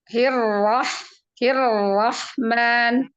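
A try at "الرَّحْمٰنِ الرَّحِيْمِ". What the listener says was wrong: Manya tipis ya, jangan ma. Suaranya di depan bibir. Beda kan gini, Bun. Dengan ma. Jadi suara itu dia arahnya kemana? Kalau misalnya suaranya mengarah ke atas, dia kan suaranya jadi tafkhim, jadi tebal.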